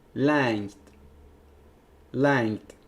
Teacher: It's palatal nasal followed by T.